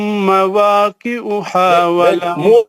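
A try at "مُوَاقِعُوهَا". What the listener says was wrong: مواقع پیش ہے وہ خط میں گول ہوٹ کر کے پڑھنا مواقع ہوا نہیں ہے وہ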